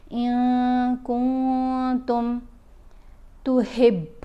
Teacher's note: इफ़ा करते हुए नून की आवाज़ को नाक में छुपा कर पढ़ेंगे और एक अलिफ़ की मिक़दार जितना ठहर कर पढ़ा जाएगा